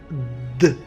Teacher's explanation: كتحس بأن لسانك مشى لعند الأسنان الفوقانية وقاس هذيك البلاصة اللي فوق الأسنان باش تنتجات د.